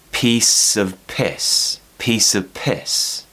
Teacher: the word of is not important so we replace it with a kind of schwa sound